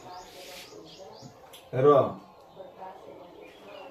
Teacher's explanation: री और र का उच्चारण स्थान मूर्धा से होता है।